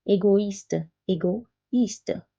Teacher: It's separating the sound of O and I, égoïste. Instead of saying oua, we are saying oi. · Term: le tréma